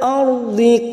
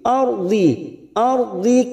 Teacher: ra sukun yang didahului fathah kita baca tafkim